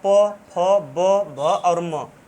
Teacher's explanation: प, फ, ब, भ और म ये जब उच्चारित हम करते हैं तो ये ओष्ठ द्वारा किया जाता है, इसलिए इसका उच्चारण स्थान जो है ओष्ठ होता है।